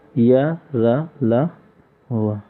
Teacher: अंतस्थ व्यंजन ऐसे व्यंजन वर्ण जिनका उच्चारण करने पर सर्वप्रथम हमारे मुख के अंदर स्थिर स्वर तंत्रियों में कंपन होता है एवं उसके बाद श्वास वायु मुख से बाहर निकलती है